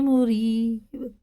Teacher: را زیر کے ساتھ باریک ہے